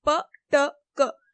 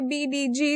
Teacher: p, t, k are voiceless and b, d, g are voiced